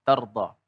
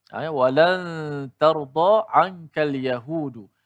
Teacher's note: Yang mana aa perkataan awal itu ialah huruf aa kalimah tardha itu terdiri daripada huruf ta. Kemudian ada ra yang mati kemudian dad yang berbaris di atas dan dipanjangkan dua harakat